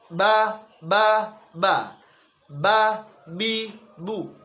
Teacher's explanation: Nafasnya tertahan, tidak dihempaskan keluar dalam pelafalan huruf ba-nya. Yang kedua, suaranya tertahan atau sifatnya adalah syiddah. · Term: jahr